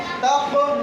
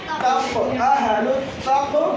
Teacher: تا قاف زبر تق, یہاں حروف قلقلہ ہے, قاف پر جزم یہاں قلقلہ ہوگا، یعنی آواز مخرج سے ٹکرا کر الگ ہو جائے گی